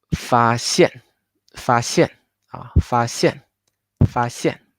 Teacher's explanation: In order to make the connection not very unnatural, so we raise the tone 1 a little bit higher. So later it's easier for you to drop to make the sound of tone 4. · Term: tone 1 and tone 4